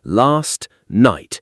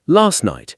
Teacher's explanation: So, last night, in careful speech, you hear the T, last night. But in natural speech, last night, the T is gone.